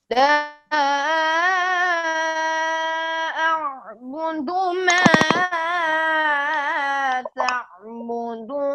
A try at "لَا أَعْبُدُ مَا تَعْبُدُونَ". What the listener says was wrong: ما پہ مد اصلی تھی. لا اعبد ما تعبدون.